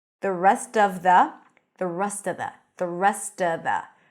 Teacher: so of often times becomes just uh but you have to connect it if you want to reduce it